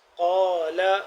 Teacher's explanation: قال قاف الف زبر قا قاف کو موٹا پڑھیں گے